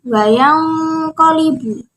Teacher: Wayang dibaca dengung karena nun sukun bertemu dengan huruf qaf, termasuk salah satu hukum bacaan iqa.